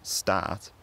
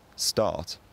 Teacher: the tongue low as it does in most english dialects but it could be pronounced with the tongue low and quite forward in the mouth stat or with the tongue low and quite backwards in the mouth start